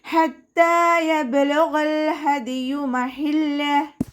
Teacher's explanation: ത കൂടെ അലിഫ് സ്വൈറയാണ് വന്നിട്ടുള്ളത്, 2 കൗണ്ട് നീട്ടിക്കൊടുക്കുക